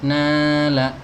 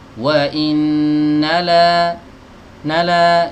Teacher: Dua harokat ini namanya mad asli ya, atau mad tabi'i ya. Panjangnya dua harokat, jangan lebih dari dua harokat ya.